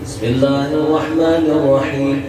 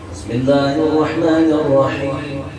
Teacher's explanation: Berarti mim dan nun itu tempat keluarnya hidung. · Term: khayshum, hidung